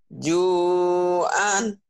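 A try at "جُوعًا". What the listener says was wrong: Ain harus keluar.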